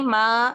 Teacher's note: मीम की आवाज भी नाक से होकर ही आती है। और अगर आप को होके नहीं आती तो फिर आप नाक को बंद करके तो फिर इसकी चेक कर सकते हैं कि मीम का मखरज ही खराब हो जाता है। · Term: पांचव दर्जे का गुना